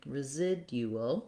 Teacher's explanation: we have second syllable stress, so you want your clear I vowel here. Same ual ending, residual.